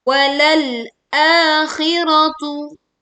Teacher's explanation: tekan lam sukun dan sebagian suara tertahan di ujung lidah.